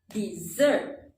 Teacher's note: dessert is a two-syllable word with the stress on the second syllable